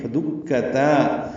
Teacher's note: دال کاف تا باریک ہیں، تا کو لمبا کرنا ہے